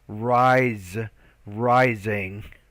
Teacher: the s sounds more like a z when it occurs between two consonant two vowel sounds rise rising